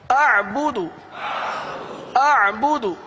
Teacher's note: حمزہ اور عین ان دونوں کی ادائیگی درست ہونی چاہیے، حمزہ سخت ہو عین نرم ہو